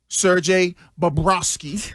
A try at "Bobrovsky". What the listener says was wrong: You always forget the V. Bobrovsky. But Bobrovsky.